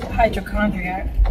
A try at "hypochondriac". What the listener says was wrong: Hydrochondriac? It's hypochondriac. You said hydro.